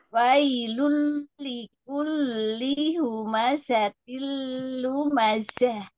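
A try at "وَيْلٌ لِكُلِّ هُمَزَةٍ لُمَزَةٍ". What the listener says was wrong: Coba perhatikan huruf wawnya. Gimana makhrajnya? Wa, bukan wa. Wa. Wailul likulli.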